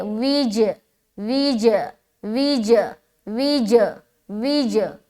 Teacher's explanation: جیم حروف قلقلہ میں سے ہے، لہٰذا یہاں پر قلقلہ کریں گے، آواز کو ٹکرائیں گے